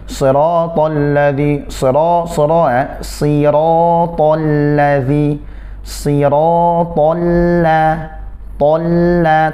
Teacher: Siratal ladzi siratal ladzi siratal la, tebalkan, kemudian ketika masuk ke lam sudah tidak lagi pangkal lidah terangkat.